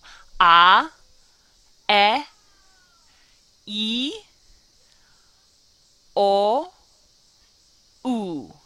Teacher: the letters go from a big mouth a and they end with a very small teeny tiny closed mouth ooh